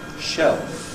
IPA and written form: ʃeɫf (shelf)